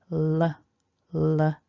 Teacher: as we make the sound, L, we flick the tongue tip forwards. Then we've got this OR vowel, OR. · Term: L sound